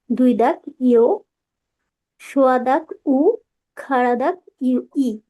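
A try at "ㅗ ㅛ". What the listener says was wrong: তবে একটা বিষয়ে নজর রাখবেন, ও এবং ইও এই দুটোর উচ্চারণ স্পষ্ট হয়নি, এই দুটোর উচ্চারণ একটু কাজ করতে হবে।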